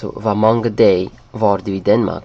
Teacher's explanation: In Danish, actually, they dropped this G sound. It's like a day, actually.